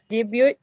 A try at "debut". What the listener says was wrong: You don't pronounce the T, it's a silent T.